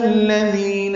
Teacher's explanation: اور ذی یا مدہ ہے 2 حرکات لمبا کرتے ہیں